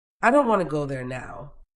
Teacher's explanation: The smaller words like I to and there are said more softly or quickly.